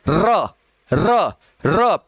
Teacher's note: आप र बोलोगे तो आप महसूस करना कि आपकी जीभ में क्या हो रहा है? कंपन हो रहा है, इसलिए उसको प्रकंपित कहते हैं।